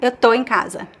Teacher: I reduce the está to estou to tô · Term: reductions